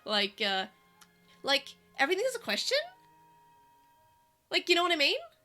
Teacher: They go up at the end of a sentence